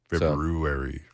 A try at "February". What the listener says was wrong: And pronounce the R.